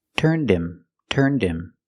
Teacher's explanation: the H in him is silent because him is not a stressed word so you hear the D and turned link to the next